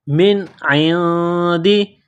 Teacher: نون ساکن کے بعد عین ہے، حروف حلقی ہیں تو نون ساکن پر غنہ نہیں کریں گے، آواز ناک میں نہیں چھپائیں گے